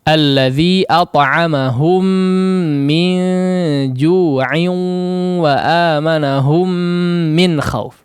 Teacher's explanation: At'amahum digunnahkan dengan gunnah yang panjang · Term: idgham mimi